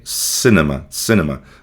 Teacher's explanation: aquele I curto, né? Que é um I com som mais ou menos de e · a gente vê novamente aqui a ocorrência da vogal fraca schwa sound